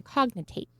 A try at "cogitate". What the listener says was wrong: So there's actually no N in cogitate. You're saying cognitate. Cognition. Cogitate, yes.